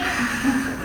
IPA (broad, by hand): k